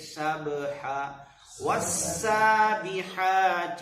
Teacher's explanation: ہا کو صحیح ادا کریں گے، حلقی ہے ہا، اور با پر قلقلہ کریں گے